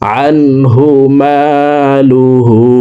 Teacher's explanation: হার উপরে উল্টা পেশ আছে, তাই ঠোঁট গোল করে এই হাকে 1 আলিফ টানে পড়ব।